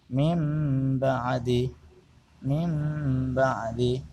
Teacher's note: cara membacanya adalah huruf nun sukun atau tanwin membacanya di balik atau ditukar dengan huruf mim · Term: iklab, iqlab